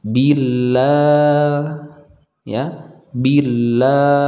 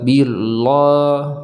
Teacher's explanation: baca dengan tipis karena sebelumnya didahului harakat kasrah maka kita baca tipis Billa ya Billa bukan kita baca tebal Billah Bukan tapi kita